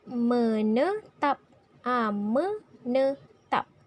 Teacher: Me adalah i pepet, ne pun i pepet, dan tap. Tap adalah suku kata tertutup dan di tengah-tengah terdapat huruf A.